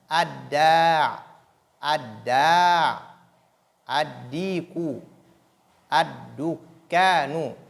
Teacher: Donc, la lettre lam n'est pas prononcée. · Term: les lettres solaires